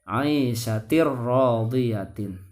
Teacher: Bertemu dengan huruf ro, maka tanwinnya dimasukkan ke huruf ro, tidak ditahan